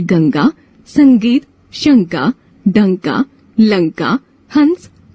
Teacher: यह ध्वनि नाक की सहायता से बोली जाती है। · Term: अनुस्वार